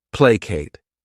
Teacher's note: This word has 2 syllables, and the stress is on that first syllable.